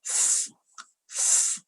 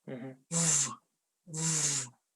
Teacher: when we pronounce f, we blow the air out because it's voiceless.